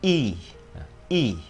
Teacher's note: Y dài là cái dạng y đọc miệng bè ra, hai cái hàm răng sát lại với nhau thì âm nó sẽ sắc lên và cái âm nó tự động sẽ dài ra. Miệng mình để như thế thì âm nó dài, còn nếu để khác đi thì âm nó ngắn.